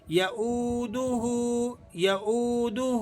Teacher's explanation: واو مدہ ہے، آپ نے اسے ایک الف کے برابر کھینچ لینا ہے